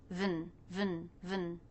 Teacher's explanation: Then we have the schwa N sound, and the N takes over the schwa, so you don't need to worry about making it a separate sound.